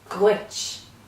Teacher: The Duit then is something like a hard G in English, like in the word girl, Duit, but it's slightly more guttural in Irish.